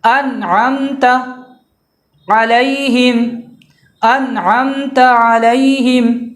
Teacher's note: نون ساکن کا اظہار ہوگا، یعنی بالکل ظاہر کر کے اس کو پڑھیں گے